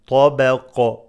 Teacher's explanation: there is قلقله when you stop